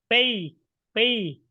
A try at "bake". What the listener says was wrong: Oh, you're not saying the K sound. You really have to say bake.